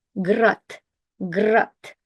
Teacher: d, a voiced consonant, turns into its voiceless counterpart t because it's the last letter